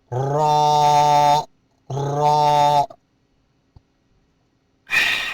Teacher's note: را کے ادائیگی کے وقت زبان اوپر خلا کی طرف اٹھے گی، لڑکھڑا جائے گی